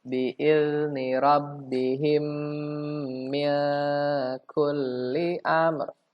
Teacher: Rabbihim, itu ditahan 3 harokat, ya. Itu hukumnya mim mati bertemu dengan mim. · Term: idgham mimi